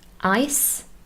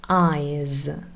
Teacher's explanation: the difference is very small. It's really the unvoiced s and the voiced partner z.